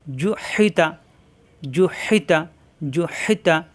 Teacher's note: তা জিব্বার আগা উপরে দুই দাঁতের গোড়ায়